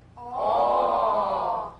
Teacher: The midway lip opening produces the vowel sound aw as in ball.